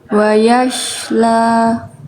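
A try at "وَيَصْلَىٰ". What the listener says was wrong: Nah, ini huruf sin, yang ini nih, bukan wawu.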